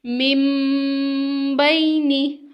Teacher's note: یہاں پہ اقلاب ہو رہا ہے، اور اقلاب کیسے ہو رہا ہے اس کی پراپر ڈیفینیشن میں آپ کو بتا دیتی ہوں۔ یعنی نون ساکن کو میم سے بدل کر غنہ اور اخفا کے ساتھ پڑھنا